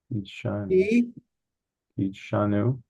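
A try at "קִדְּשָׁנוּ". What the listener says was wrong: Ki de sha. Here's that duh. See what that doggish does? Instead of saying ki sha, it's ki sha.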